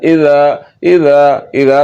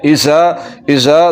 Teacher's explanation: सीटी की आवाज़ बिल्कुल नहीं निकालनी और बगैर सीटी के पढ़ना है